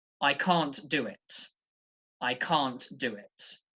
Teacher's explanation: can't and do are both stressed when is negative